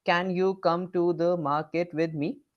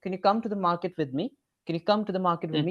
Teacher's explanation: all the syllables they are well equally stressed